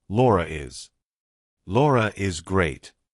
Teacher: if I have to link my name to something else that's a vowel, I have to put an R in there. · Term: intrusive R